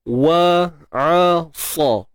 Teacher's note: Untuk sa, huruf sad yang berbaris atas tebal.